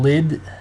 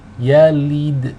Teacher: the lam here takes a kasra. We want the e sound, not the ih sound.